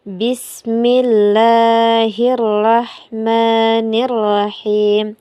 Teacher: Ee kesalahan yang sering terjadi adalah pada pelafazan ee huruf ee kesalahan yang terjadi adalah huruf H. Huruf H pada ar-Rahman dan arrahim ini yang sering dibaca H besar atau tebal. Padahal ini dibaca tipis.